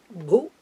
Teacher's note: It's a short letter, and it is a third letter, so it's a what we call the Alpa Prana letter, non-aspirate letter